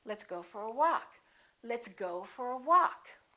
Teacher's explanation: go get some stress but walk gets a lot more stress · walk is gonna get the stress